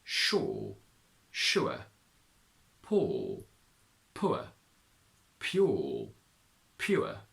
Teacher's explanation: The diphthong ua in final position is obsolete in RP and we say or instead. However, in Yorkshire you keep the diphthong. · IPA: /ʊə/